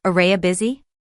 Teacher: You almost lose the separate sound of you because it becomes part of the flow.